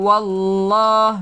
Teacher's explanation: Baik, wallah lafzul jalalah, lafaz yang agung. Ingat nama Allah kita panjangkan 2 harakat.